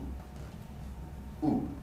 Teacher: High, back, tense. The lips are rounded, so it's sometimes difficult to remember that the tongue position is actually pulled towards the back. The sound oo is created by lengthening the space in the mouth. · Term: vowel oo